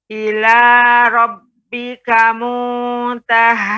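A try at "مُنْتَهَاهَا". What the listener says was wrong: Ya, pengucapan ha ya sudah cukup baik, namun pengucapannya tidak terlalu berlebihan ya. Pengucapannya dengan apa namanya, mudah, artinya ketika mengucapkannya muntahaha, Tidak muntahaha. Nah, ini agak terlalu lebih berat. Jadi pengucapannya mudah saja. Muntahaha. Kemudian monyong sedikit, kemudian balik lagi. Muntahaha.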